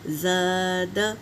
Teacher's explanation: ذہن نشین کر لیں کہ الف سے پہلے اگر زبر ہو تو الف مدہ ہوگا۔ اسے ایک الف کے برابر کھینچ کر پڑھیں گے، دو الف بھی کھینچ کر پڑھ سکتے ہیں۔ جیسے زا الف زبر زا، اس کو کھینچیں گے، اور دال کے اوپر حرکت ہے تو اس کو جلدی پڑھیں گے۔